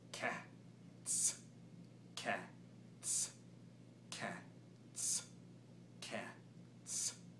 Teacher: cats uses the K hi-hat sound as well as a syncopated hi-hat sound with a tongue behind the front teeth